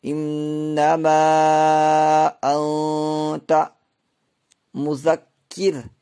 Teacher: را ساکن سے پہلے زیر ہے، اس لیے را کو یہاں باریک کر کے پڑھیں گے · نون ساکن کے بعد حروف اخفا میں سے تا آ رہی ہے، اس لیے یہاں پر اخفا ہوگا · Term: را باریک